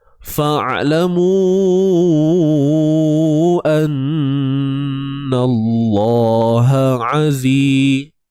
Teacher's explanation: Nun ni wajibul gunnah lah. Wajib kita dengung 2 harakat kadarnya.